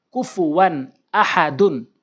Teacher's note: নাকের ভিতরে ধরে রাখা যাবে না এবং গুন্না করা যাবে না স্পষ্ট করে দ্রুত উচ্চারণ করতে হবে